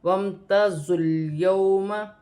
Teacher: واو ساکن سے پہلے زبر ہے تو واولن بنے گی، اسے کھینچا نہیں جائے گا